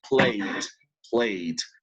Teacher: if what I have at the end of the verb is a vocal sound, like in study or like in play, so then the sound of ed is like d. · El sonido de la ed, en ese caso, cuando el sonido, el final del verbo es un sonido vocal, pues el sonido de la ed es como más hacia d